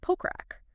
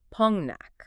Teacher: because of Korean nasalization rules, which are basically designed to make speech flow more naturally without hard stops, the consonants blend together, so it is pronounced Pongnak.